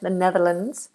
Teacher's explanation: the Netherlands with an S but it's pronounced as a zed